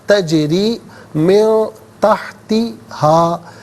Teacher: تجری را کے نیچے زیر ہے، را پر زبر یا پیش ہو تو پر پڑھتے ہیں، زیر ہو تو باریک پڑھتے ہیں، یہاں باریک کر کے پڑھا جائے گا